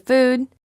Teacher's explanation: ooh is a tense sound the lips are rounded and tense